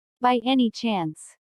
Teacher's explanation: notice the rising intonation which is used in yes no questions to confirm that something is true